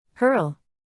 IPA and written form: hɜrl (hurl)